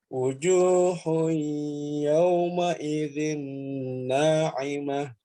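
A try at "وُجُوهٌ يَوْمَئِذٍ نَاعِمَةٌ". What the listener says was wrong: Coba diulang, U-nya masih kurang U.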